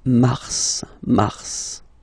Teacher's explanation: normally final S is not pronounced in French. Okay, we've got some exceptions and this one is one of them. So mars, pronounce the final S, mars, mars.